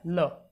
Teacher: ये हिंदी वर्णमाला का पहला और आखिरी शब्द है जिसका उच्चारण मुंह के बगल से होता है। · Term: पार्श्विक वर्ड